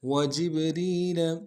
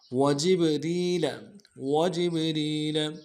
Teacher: وجبریل میں جیم کو با کے ساتھ ملانا ہے، با حرف قلقلہ میں سے قلقلہ کریں گے، اور را کو باریک کرتے ہوئے یا کے ساتھ ملائیں گے، یا لین بغیر کھینچے، یا مدہ ہے، ایک الف دال میں کھینچیں گے.